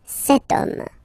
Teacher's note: H is not pronounced, so the first sound that we hear is O, okay, and then it will follow the same rule.